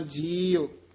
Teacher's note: ਬਾਂਧੂ ਮੂੰਹ ਵਾਲਾ ਊੜਾ ਬੋਲਣਾ ਹੋੜੇ ਨਹੀਂ ਲਾਈ ਜਾਣੇ